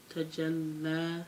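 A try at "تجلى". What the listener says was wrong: Tajalla. Give it the mad. Tajalla.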